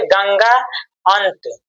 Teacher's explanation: अनुस्वार का उच्चारण केवल नाक से होता है